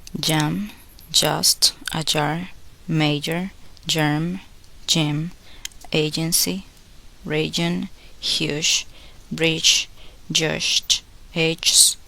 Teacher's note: Place the center of the tongue against the palate, stop the air completely, and then release it abruptly with a voice sound. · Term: the sound j